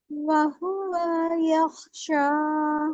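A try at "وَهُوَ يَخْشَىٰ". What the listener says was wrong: वाव को ना, इस ये वाले वाव को, इसको जल्दी छोड़ दें।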